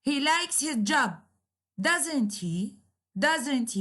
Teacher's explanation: Doesn't he? You see, the intonation is falling. So instead of going up, it is going down. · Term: falling intonation